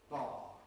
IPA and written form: bɑː (bar)